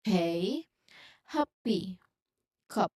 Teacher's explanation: pressing both your lips together, building up an air, and then releasing it in a sudden puff. So it's a sharp and voiced burst, basically. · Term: p sound